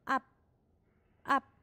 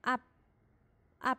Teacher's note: 你要按照▁b▁去发它，但是在这个▁b▁快出来的时候收住它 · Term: b▁不发音